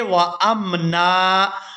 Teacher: جب ہم یہاں پر وقف کریں گے تو وقف کی صورت میں نون پر 1 زبر ادا کریں گے اور الف مدہ کی وجہ سے نون کو کھینچ کر ادا کریں گے